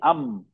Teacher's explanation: हर्फ मीम दोनों होठों को आहिस्ता से बंद करने पर अदा होता है। मीम की आवाज आगे कश मतलब नाक में नेसल पैसेज में चली जाती है। मीम में होठों का सूखा हिस्सा ड्राई पार्ट आपस में लाइटली मिलता है।